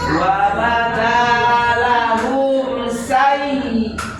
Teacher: Jadi di say-nya ditekan ya, Bu. Say-nya ditekan.